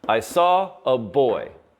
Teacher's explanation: Saw, boy are stressed. I, not stressed. So iamb plus iamb.